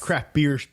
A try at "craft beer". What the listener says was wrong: you say that, I still think you say crap beer. Every time you say craft beer, I think you say crap beer. craft, but sometimes it sounds like you're saying crap beer.